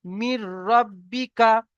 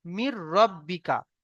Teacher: মিলিয়ে পড়তে বলতে এই যে র সঙ্গে মিলিয়ে পড়তে হবে। মাঝখান থেকে এই যে নুন, নুনটা বাদ চলে যাবে, নুন সাকিনটা বাতিল হয়ে যাবে। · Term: বিনা গুন্নায় জাহির